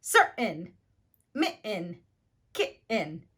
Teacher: we replace the true T sound with a glottal stop in words where we have a vowel, the N sound, or the R sound, followed by the T, and followed again by the N or R. · my voice catches before continuing in the American T sound